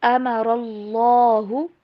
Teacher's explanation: من بعد میثاقہ، میثاقہ، وَيَقْطَعُونَ، قاف کے اوپر کلکلا، وَيَقْطَعُونَ مَا أَمَرَ اللَّهُ، را کو بھی اور اللہ کا نام دونوں کو موٹا پڑھیں